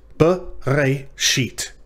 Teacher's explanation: that middle syllable, re, it ends in an aleph, which is a consonant, and therefore closes the syllable, but it is silent, and there is no shava under it. · The pretonic, in this case, second syllable is the syllable re, and the tonic or final syllable is sheet. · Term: quiescent aleph